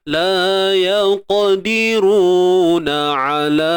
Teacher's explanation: ain sempitkan di bahagian tengah kerongkong jangan bunyi hidung